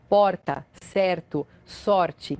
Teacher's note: O pessoal de São Paulo, capital, Curitiba e boa parte dos gaúchos faz o R com a ponta da língua. Esse som de R é feito com a ponta da língua vibrando.